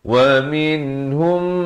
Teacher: Di sini mim mati bertemu mim, dengungkan 2 harakat.